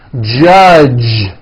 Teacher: the J sound in American English is always voiced